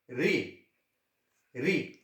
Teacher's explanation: ऋ जो है इसका उच्चारण स्थान है मूर्धा